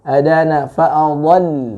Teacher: lamnya tipis, dhatnya memang dibaca dengan tebal atau isti'la daripada huruf tersebut ataupun itbaqnya